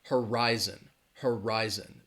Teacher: horizon has three syllables and the stress is on that second syllable · you can hear my emphasis on that second syllable horizon that first syllable has that schwa that huh uh-huh rise